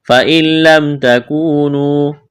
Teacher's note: نون ساکن کے بعد لام ہے، ادغام کریں گے بغیر غنہ کے۔ فَإِن لَمْ تَكُونُوا، واو مدہ ہے، کھینچنا ہے۔